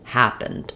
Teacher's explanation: a little bit of a schwa, or almost just no vowel going right from the p to the n and the d sound, happened. To be able to get that rhythm and get those vowel sounds correct, I do suggest starting on that stress syllable.